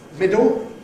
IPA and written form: ˈmɪdo (middle)